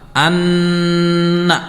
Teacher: Anna itu gunnah dibacanya 3 sampai 4 harakat.